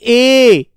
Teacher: ए बेटा कंठ और तालु से निकल कर आई है आवाज